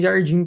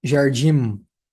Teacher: Você fecha a boca não é o que acontece em português o m aqui ele entra só para mostrar que é uma vogal nasal que tem uma nasalidade